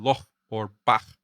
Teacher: is a voiceless velar fricative, the same as the CH in loch or bach, or in the way many Spanish speakers pronounce the J in jamon or Alejandro.